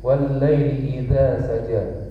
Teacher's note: Wal-laili ada tasdid juga di lam, harus ditahan sedikit.